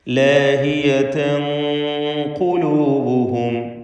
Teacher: ലാഹിയതൻ ഖുലൂബുഹും, ഇവിടെ തൻവീനും ശേഷം ഖാഫുമാണ്. ഇഖ്ഫാ ഹഖീഖി നൽകി മറച്ചു മണിക്കണം. മണിക്കലിൽ തഫ്ഖീം വേണം. ഖാഫ് തഫ്ഖീമിൻ്റെ ഹർഫായതുകൊണ്ട് മണിക്കലിലും തഫ്ഖീം വേണം.